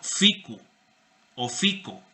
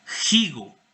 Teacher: Que se aspiró, que evolucionó esa F a un elemento glotal